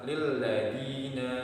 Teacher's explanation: Karena ada da yang berharokat kasroh bertemu dengan ya sukun sehingga dibacanya panjang dua harokat. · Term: mad tabi'i